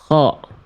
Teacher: K dilafalkan dari tenggorokan paling atas atau bagian terluar dari tenggorokan.